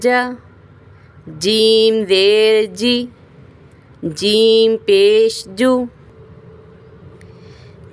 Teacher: جو ہی ہم جیم کو پڑھنے لگتے ہیں تو ہماری زبان کا درمیان اوپر تالو کی طرف چپک جاتا ہے، بعد میں جیم ادا ہوتا ہے۔